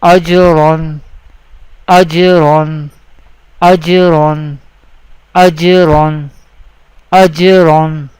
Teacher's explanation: Ra will be pronounced with heavy voice or thick voice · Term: Tafkheem